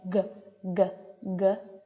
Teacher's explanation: If you want to go ahead, put your hand up to your throat and make the G, G, G sound. You can feel your vocal cords vibrating, which is very different from K. So G is voiced, and it is an unaspirated stop, meaning that puff of air can come out at any point as you are pronouncing G.